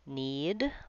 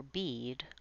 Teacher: Vowel E is a high front tense vowel, meaning I make it with my tongue high and towards the roof of my mouth and towards the front of my mouth